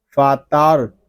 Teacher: را پور پڑھیں گے اور تا کو ہم باریک پڑھیں گے، فاتار۔